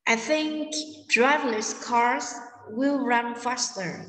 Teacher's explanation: Ở đây người ta nhấn vào âm think, drive cars run fast.